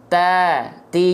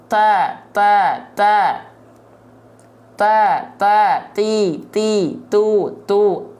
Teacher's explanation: ujung lidah disentuhkan dengan pangkal gigi seri atas ya ta ti jadi nongol Enggak tuh ujung lidahnya keluar Enggak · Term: huruf ta